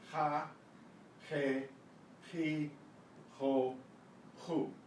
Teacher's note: way you make the sound is in the back of your throat, like an H, except it's coming out of the guttural part of your voice box. The name of the letter is jota, jota.